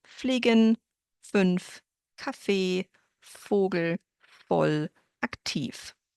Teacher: So you can't hear a difference between the words with an f and the v. They all sound like f. The only exception to that is when we have names or foreign words that were imported into the German language.